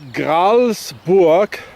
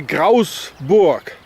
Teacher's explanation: So the word Gralsburg, or Gralsburg as it used to be in German, would be pronounced here Grausburg, because they don't say the L. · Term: don't pronounce the L